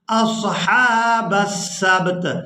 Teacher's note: یہاں پر جب ہم وقف کریں گے تو وقف کی صورت میں تا کو ساکن کر دیں گے، سین کو با ساکن اور تا ساکن کے ساتھ ملا کر ادا کریں گے